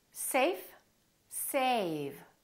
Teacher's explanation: notice how a was longer with the V than with the F